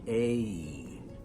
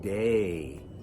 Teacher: Then we have the sound that is basically the name of the letter A. Notice the sound moves as we pronounce it.